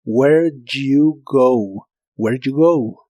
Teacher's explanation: En este caso la combinación D e Y igual la suelen pronunciar como J.